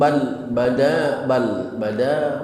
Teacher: mohon lamnya jangan sampai timbul pantulan qalqalah sehingga terdengar bacaan bale bale bale. Jangan pakai le karena lam bukan huruf qalqalah. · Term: tanpa pantulan qalqalah